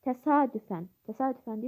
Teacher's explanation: vurğu a'nın, yəni ikinci hecanın üzərindədir, sonda deyil